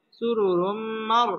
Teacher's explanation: সুরুরুম এই রটাও পুর হবে সুরুরুম এটা হচ্ছে ইদগামে বা গুন্না তানবিনের বামে মিম আসছে মিম ইদগামে বা গুন্নার হরফ এখানে গুন্নার সহ মিলে পড়তে হবে সুরুরুম মার রটা পুর হবে মার ফু পেশের বাম পাশে জজম